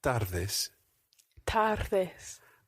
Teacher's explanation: tardes is one of these slightly tricky Spanish words. It's got a rolled R in there.